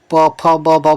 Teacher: जब भी आप प फ ब भ बोलेंगे तो आपके दोनों ओठ जो होते हैं वो क्या करते हैं, आपके ओठ दोनों चिपक जाते हैं। कभी आप ट्राई कीजिएगा कि प को बिना ओठों को चिपकाए बोल कर देखिएगा। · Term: ओष्ठ व्यंजन